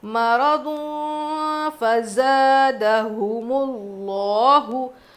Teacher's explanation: قلوبہم مرض، مرض، را پہ زبر، را موٹا، ضاد پر تنوین ہے، تنوین کے بعد حروف اخفا میں سے فا آیا ہے تو تنوین کو، نون کی آواز کو ناک میں چھپا کر پڑھیں گے